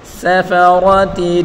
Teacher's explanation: سین فا را تینوں کے اوپر پڑی حرکت ہے، بغیر کھینچے پڑھیں گے. سین کو تیزی کے ساتھ پڑھیں گے، اور را کو پر پڑھیں گے. سفرۃ، تا گول کو وقف میں ہا ساکن کر کے پڑھیں گے.